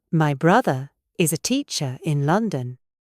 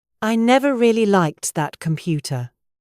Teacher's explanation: We are non-rhotic. This means we do not pronounce the R sound at the end of words or before a consonant. We replace it with a long vowel or a schwa. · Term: non-rhotic R